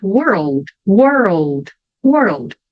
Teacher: W que é sempre faço um biquinho Então puxa e daí esse L Na verdade ele vai soar como se tivesse um o na frente